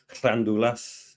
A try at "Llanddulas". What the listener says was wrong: The U is like an E sound, so Llanddulas. Llanddulas.